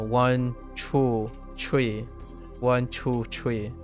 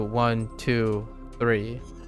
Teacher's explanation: Chinese accent will have tree always for the number 3